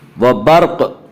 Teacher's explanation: را ساکن سے پہلے زبر اور پیش آئے تو را کو پر پڑھیں گے، را ساکن سے پہلے زیر آئے تو را کو باریک پڑھیں گے، یا را ساکن سے پہلے با کے اوپر زبر ہے اس لیے را کو پر پڑھیں گے۔